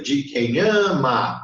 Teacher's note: de quem ama, ó, o an é forte, o ma é fraco, então eu não pronuncio ele, eu vou cortar.